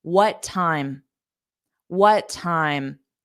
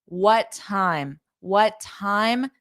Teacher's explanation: you can remove the pause between them by dropping the T on the first sound